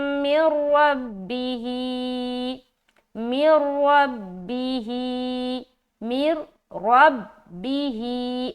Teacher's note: इदगाम ताम करेंगे, यानी कि सिर्फ मिलाएंगे, गुन्ना नहीं करना। तो यहाँ पर हम क्या पढ़ेंगे, मौइज़तुम मिर रब्बिही, मिर रब्बिही, मिर रब्बिही, रा मुशद्ददा मोटा पढ़ा जाएगा क्योंकि इसके ऊपर जबर है। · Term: इदगाम बगैर गुन्ना